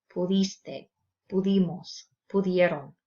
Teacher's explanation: when changing the verb from the infinitive to the personal, the conjugated forms, notice that the stress remains on the ending.